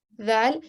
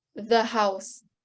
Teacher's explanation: you're very lightly touching the bottom part of your top teeth